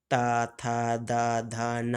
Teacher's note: ता वर्ग का उच्चारण दंत से होता है। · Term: दंत्य